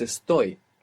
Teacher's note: the only verb in the entire Spanish language that doesn't have the accent on the penultimate syllable in the present tense so it's not esto it's esto the accents on the ending · the accent will be on the last syllable